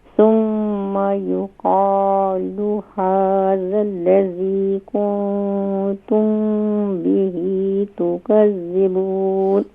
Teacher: قاف کو مزید فل ماؤتھ کریں